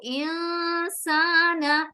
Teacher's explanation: Very good, یہاں اخفا ہوگا تو انسان. اب اس نون کو میں ناک میں چھپا رہی ہوں, ٹھیک ہے, اور لمبا بھی کر رہی ہوں